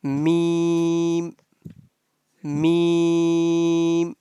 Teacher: And the sound of meme pronounced from the dry part of both lips